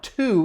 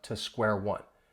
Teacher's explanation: when you hear me say it now to it sounds just like the number two because I'm stressing it